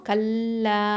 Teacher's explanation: இப்போது காஃப் ஃபத்ஹா லாம் ஷதா கல், லாம் ஃபத்ஹா அலிஃப் மத்து லா 2 ஹரக்கத்தை நீட்டணும்